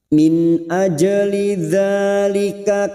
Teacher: Min, nun sukun bertemu hamzah idhar halqi, nun sukun dibaca jelas tanpa mendengung. Min ajli dzalika, aj jim sukun qalqalah sugroh yang mati asli di tengah kalimat, jangan lupa dipantulkan.